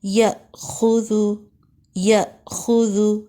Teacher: next دیکھیں یأخذ، یأخذ، حمزہ کے اوپر ساکن جب آئے گا، جزم آئے گا تو ہمیشہ جھٹکے سے پڑھتے ہیں